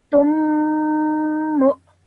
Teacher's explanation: hold the meme sound in your nose for around 2 seconds as well.